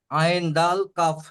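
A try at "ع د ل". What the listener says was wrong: আইন দাল কাপ কি করে হলো? লাস্টেরটা কি দেখেন? লাম, ঠিক বলেছেন, আইন দাল লাম।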